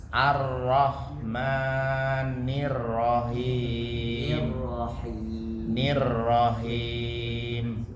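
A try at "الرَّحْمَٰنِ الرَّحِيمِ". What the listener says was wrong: Ro-nya lebih sedikit ditebalkan. Nah, jangan sampai Nir-Ro. Baca masih Nir-Ro.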